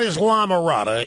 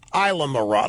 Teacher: The S is silent in there.